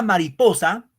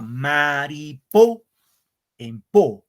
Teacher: la palabra mariposa, por ejemplo, el acento recae en po. El acento a maripo, en po.